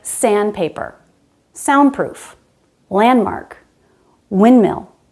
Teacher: We drop the D because it's between two other consonants.